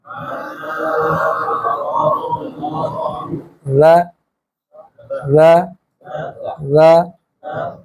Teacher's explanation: زبان اوپر کے دانتوں سے لگے گی